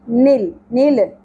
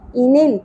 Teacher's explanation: انل نل نل نہیں پڑھنا، قلقلہ نہیں ہوتا چاہیے لام پر. انل کا کاف کو باریک ادا کریں گے اور کھڑی زبر کو ایک الف کے برابر کھینچیں گے.